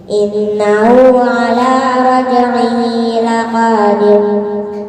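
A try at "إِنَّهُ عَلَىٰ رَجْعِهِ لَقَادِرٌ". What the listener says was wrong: Tipis tebal barusan. Itu tebal. Oke, itu tebal. Kalau tipis, innahu ala raj'ihi laqadir. Bibirnya itu tipis. Bibirnya itu enggak monyong atau enggak bikin huruf o. Laqadir.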